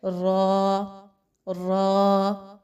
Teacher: یہاں پہ را پر زبر لگا کے پڑھا جا رہا ہے، را الف، تو اس کو پر پڑھا جا رہا ہے